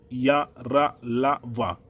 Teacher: जब हम अर्धस्वर का उच्चारण करते हैं जैसे या, रा, ला, वा, तो इसमें हल्का सा अवरोध उत्पन्न होता है